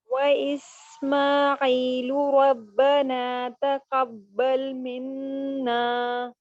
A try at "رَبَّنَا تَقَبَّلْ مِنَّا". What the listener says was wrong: را کو پور کیجئے. ربنا تقبل منا.